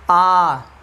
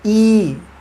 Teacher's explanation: जैसे मैं बोलता अ बोलने मेरे ओठ फैल रहे हैं, आ फैल रहे हैं, ई फैल रहे हैं। तो मतलब ऐसे वर्ण जिनको बोलने के उपरांत आपका जो साइज़ है ओठ का वो गोल ना होकर के फैल जाता है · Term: अवृत्तमुखी